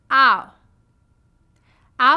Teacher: your lips Glide from an open position to a rounded position ow your jaw Rises with the tongue and closes your tongue · Your jaw rises with the tongue and closes. Your tongue glides from a low position to a high near the roof of your mouth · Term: diphthong, second diphthong